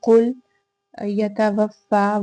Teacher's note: فا پہ کھڑا زبر ہے، الف مدہ کی قائم مقام ہے، 2 حرکت لمبا کر کے ادا کریں گے